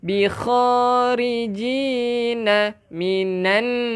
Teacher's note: Bikha, jaga kha na, kha kasarkan sikit. Bikharijina minan.